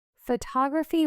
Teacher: Photography with stress on the tog syllable.